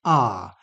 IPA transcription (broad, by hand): ɑ: